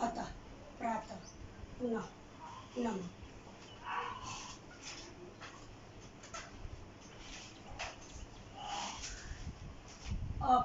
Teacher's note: इसे विसर्ग कहते हैं, इसे ह की तरह बोला जाता है